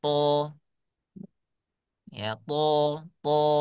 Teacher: To, ketika diucapkan dia tebal suaranya. To, ya to. Kemudian saya mengucapkan huruf dal, suaranya menjadi tipis.